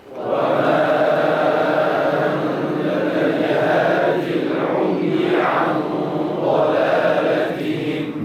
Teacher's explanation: هادي فاعل ها لكنها كتبت بدون ياء على نيه الوصل لانها في الوصل تسقط الياء للتخلص من التقاء الساكنين